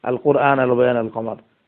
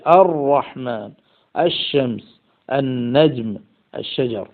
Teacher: লামের মধ্যে ইদগাম করার কারণে সেখানে শিদ্দত পয়দা হয়েছে, শক্ত করে সেটা উচ্চারণ করা হচ্ছে